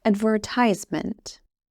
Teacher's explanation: Ad, ver, ties, ment. And the stress of this word is on the 3rd syllable, on ties. You say the adverb part fast. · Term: Word stress